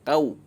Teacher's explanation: wawu sukunnya ini dibaca u, bukan o